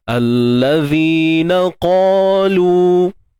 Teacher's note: Cuma untuk huruf qaf ni kita kena tebalkan lah, ya. Untuk qaf ni kita kena tebalkan dia.